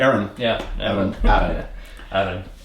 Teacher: Accent on the second syllable.